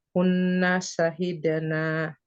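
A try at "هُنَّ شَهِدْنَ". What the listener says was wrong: Pendek, Bu. Kalau yang pendek dibaca pendek, yang panjang dibaca panjang. Beda arti itu. Kalau pendek dibaca pendek ya. Kalau panjang beda arti soalnya. Iya, cara bacanya maksudnya. Berarti jangan dipanjangkan.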